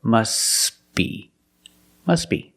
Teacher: When you link the words, must be. Link the sounds, S with a B. S, B. Together, must be.